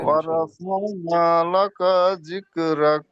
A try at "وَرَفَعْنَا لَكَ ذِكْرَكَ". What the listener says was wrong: লাকা টান হয়ে যাচ্ছে। ওয়ারাফা'না লাকা যিকরাক কা জি লাকা যিকরাক